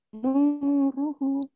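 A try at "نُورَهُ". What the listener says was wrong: Ro, dibaca ro, ulangin.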